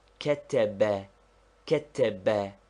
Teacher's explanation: There is a slight stress upon the first syllable